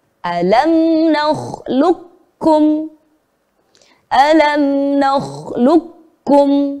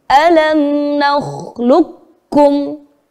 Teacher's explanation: Huruf qaf kita leburkan kepada huruf kaf. Maka yang sebagian besar tampak didengar adalah huruf kafnya. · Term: idgham mutaqaribain